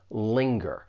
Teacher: When you pronounce this verb, it has two syllables. The stress is on that first syllable